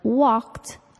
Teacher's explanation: the ed verb ending sounds like a t walked even though it ends in the letter d